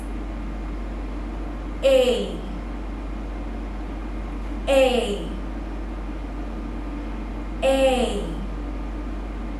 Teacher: the vowel a and it sounds like this a a a it's like you're smiling a and it's elongated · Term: long sound